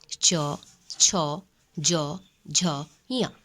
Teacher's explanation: इसका उच्चारण स्थान जिह्वा का पूरा स्पर्श तालु से होता है।